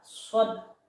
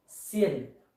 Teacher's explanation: Kalau shad itu terangkat, shad. Kalau sin yaitu merendah.